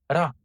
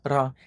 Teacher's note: They both have an allophonic variation, which means a change in a specific context, turning into the alveolar tap ra, articulated in the same place as T and D, the alveolar ridge, just behind your teeth